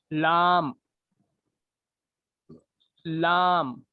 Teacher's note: दांतों के मसूड़ों से लगे, मसूड़े रहते ना दांतों के, वहां पे लगाना आपकी जुबान की जो है नोक को